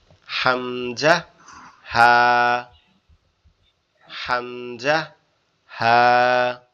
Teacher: 1 number মাখরাজ কণ্ঠনালী শুরু হইতে হামজা হা